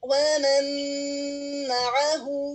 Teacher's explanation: نون میم کے اندر مرج ہو گیا ہے، نون میم میں داخل ہو گیا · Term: ادغام بغنہ